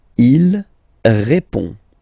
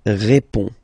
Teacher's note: final D is not pronounced. You only have this on nasal sound at the end